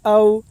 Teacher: واو ساکن سے پہلے زبر ہے، اس لیے واولین ہوگا۔ واولین کو نرم آواز کے ساتھ جلدی ادا کریں۔ معروف پڑھیں، مجہول آواز سے بچیں۔